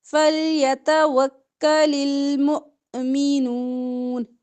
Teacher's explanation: حمزہ پہ جزم ہے جھٹکا